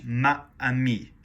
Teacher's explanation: Because you've got a hiatus, you've got sound stopping in your throat.